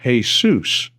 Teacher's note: In Spanish, the name is pronounced Jesus. A different syllable is accented and the J is pronounced like an H